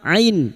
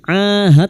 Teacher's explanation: ain fathah diikuti alif dua harakat mad thabi'i